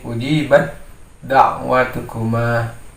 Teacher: Jadi masuknya suara ta ke dalam huruf dal. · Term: idgham mutajanisain